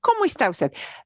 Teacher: with a question, we rise at the end of the question